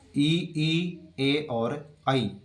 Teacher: जीभ के अगले हिस्से से बोले जाते हैं ई ए और आई, जो कि अग्र स्वर कहलाते हैं।